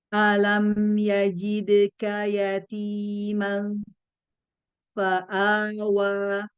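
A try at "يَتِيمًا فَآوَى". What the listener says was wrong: terlalu menekan di fa-nya. Dekatkan saja, jangan ditekan dulu. bukan mal, tapi manfa. Jadi kayak suara hidungnya itu lebih banyak daripada di bibir.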